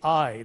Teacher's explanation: It's a combination of two vowel qualities in one. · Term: diphthong